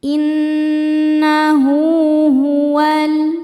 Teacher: Innahu hu hukumnya mad silah qasirah karena ada ha damir yang huruf sebelum dan setelahnya adalah huruf yang hidup jadi bukan huruf sukun ya dan setelahnya ini bukan huruf hamzah maka ha dhamirnya dipanjangkan dua harakat